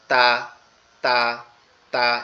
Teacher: জিহ্বার আগা সামনের দুই দাঁতের গোড়ার সঙ্গে লেগে উচ্চারিত হবে